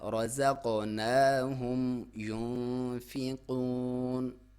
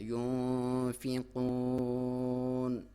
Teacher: اس کو باریک اخفا کرنا ہے، ناک میں سے لے کے جانی ہے لیکن باریک